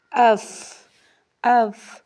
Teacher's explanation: اوپر والے دو دانتوں کا سیرہ اور نیچے کی ہونٹ کا اندرونی حصہ یعنی تر حصہ، اس سے فا ادا ہوتا ہے۔